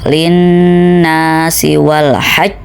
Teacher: Nah, kalau qalqalah akbar ini sama dengan qalqalah kubro, terletak di akhir tetapi terdapat tanda tasydid di atas huruf qalqalah tersebut. Jadi cara bacanya harus ada jedanya baru kemudian qalqalahkan.